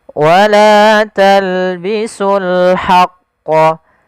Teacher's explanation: Di sini alif lam qamarah. Yaitu alif lam kita tulis dan kita baca dengan jelas suara lamnya